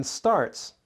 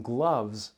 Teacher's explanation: In starts, the s is not voiced, but in gloves, the s is voiced.